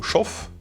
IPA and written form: ˈʃɔf (shof)